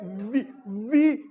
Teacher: वी में आपका होंठ बंद हो रहा है ना ऊपर वाले दांतों के साथ